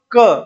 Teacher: तो दोस्तों अगर कंठ आए तो कंठ करना है आपको, बाकी कोमल तालव्य आए तो आपको इसमें कोमल तालव्य जो कंठ से थोड़ा सा ऊपर होता है